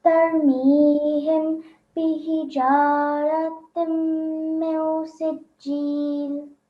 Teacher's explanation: So when there's a Gunna sound, you have to hold the sound of meme for at least 2 seconds.